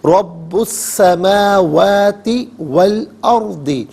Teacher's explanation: را ساکن ما قبل حمزہ پر زبر، را ساکن کو پر کر کے پڑھیں گے. ناظرین سین اور با دونوں پر تشدید ہے تو انہیں جماؤ کے ساتھ پڑھا جائے گا.